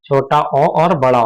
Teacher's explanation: जीभ का जो पिछला भाग होता है इन्हें बोलने के लिए सक्रिय रहता है